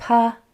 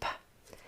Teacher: Make sure your P is voiceless. No vocal cords are used, only air. P, so it's not pa.